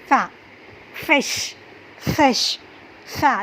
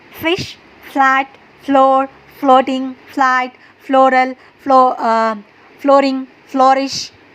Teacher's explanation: ये हमारे जो ऊपर के दांत होते हैं ना वो हमारे होठों को टच होते हैं। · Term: फ की साउंड